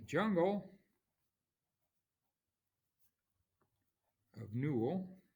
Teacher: that's anapest so unstressed unstressed stressed